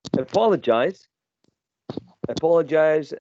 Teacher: apologize has uh four syllables and the stressed one is the second one